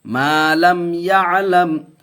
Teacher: ما لم اظہار شفوی کا قاعدہ بغیر گناہ کے پڑھیں گے